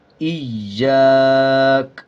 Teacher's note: جب وقف کریں گے کاف کے اوپر والا زبر سائلنٹ ہو جائے گا اور کاف کی آواز کو آدھا پڑھا جائے گا